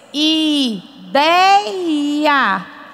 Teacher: a palavra que eu imprimo mais força é no dei e tem o ditongo Ei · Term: sílaba forte